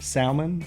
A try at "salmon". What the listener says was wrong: Oh, you leave the L in there? Salmon. I say salmon.